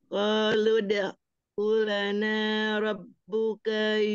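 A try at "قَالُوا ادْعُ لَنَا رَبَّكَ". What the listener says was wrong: Umi rabbaka bukan rabbuka.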